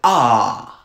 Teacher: a low back vowel is ah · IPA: ɑ